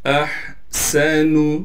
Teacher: احسن، حمزہ کو ہا سے ملائیں گے، ہا کو صاف کر کے گلے سے نکالنا ہے، گلے کا وہ حصہ جو منہ کی جانب ہے، سین میں سیٹی ادا کریں گے، نون کو بالکل کھینچنا نہیں ہے۔